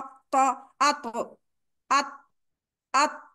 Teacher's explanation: ऊपर के दो दांतों का जो मसूड़े हैं उनके दरमियानी हिस्से पे दानेदार जगह पे ऊपर जाके आपकी जुबान की नोक जुड़ जाती है